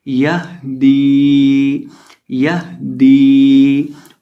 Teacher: ये जो हा है इसका मखरज यानी निकलने की जगह, इसका मखरज है हलक का आखिरी हिस्सा। जो हलक का आखिरी हिस्सा है सीने के साथ मुत्तसिल, ये हा दो आंखों वाला वहाँ से अदा होता है, तो इसकी आवाज़ आएगी यहदी यहदी।